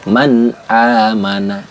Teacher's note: dibaca jelas Nun sukunnya enggak boleh didengungkan Enggak boleh ditahan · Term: izhar halq